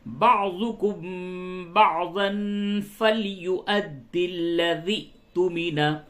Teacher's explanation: بعضاً تنوین کے بعد فا ہے، اخفا کیجئے